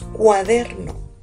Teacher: UA forman el diptongo y DER es la sílaba tónica